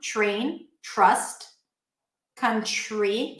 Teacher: we have the T before an R, sounds like a ch sound